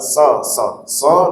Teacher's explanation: Makhraj sad, ujung lidah menyentuh gigi seri bawah